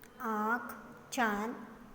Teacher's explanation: यह अनुनासिक चिन्ह का उच्चारण मुंह और नाक से दोनों से होता है। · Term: अनुनासिक ध्वनि